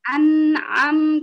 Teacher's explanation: Jadi nun sukun coba berusaha ditekan sedikit, jangan dilepas nun sukunnya sebelum jenengan ke am.